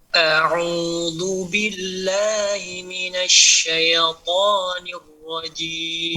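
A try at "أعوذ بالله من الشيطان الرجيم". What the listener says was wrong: Pada za betul dia mengalir, tapi dia tidak tebal Pak.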